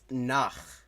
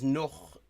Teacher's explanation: in like most like southern variants of German, including in Austria, this same sort of vowel shift happens. Because in like High German, that's nach, but in the south it becomes noch